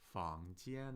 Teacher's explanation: 房 间 is second tone, first tone, right? We have 房 with a rising tone. That's the second tone, the rising tone.